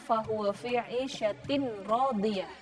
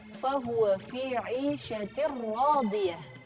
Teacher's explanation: jadi tak marbutohnya kasrotainnya ini melebur kepada huruf ro yang bertasydid. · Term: idgham bila gunnah